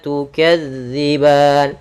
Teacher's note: Dan pada lafal ban sama seperti lafal dan, ada bacaan mad arid disukun, kita boleh manjangkan 2 harokat, 4 harokat ataupun 6 harokat